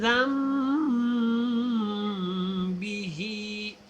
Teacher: یہ نون نہیں پڑھا جائے گا، میم پڑھا جائے گا۔